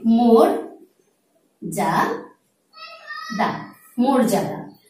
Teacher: আদ্য অয়ের পরের বর্ণে যদি রেফ যুক্ত হয় তাহলে সাধারণত আদ্য অয়ের উচ্চারণটি হয়ে যায় ওকারান্ত